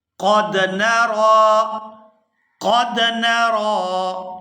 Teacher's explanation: یہاں قاف کو پورا ادا کریں گے اور آگے دال ساکن کے ساتھ ملائیں گے۔